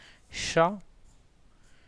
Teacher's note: इसे हम तालव्य सा कहते हैं, ठीक है। क्योंकि इसका जो उच्चारण स्थान होता है वो तालु से होता है। जब हम चा छा जा बोलते हैं तो ये तालु से निकलने वाली ध्वनियाँ हैं, ठीक है।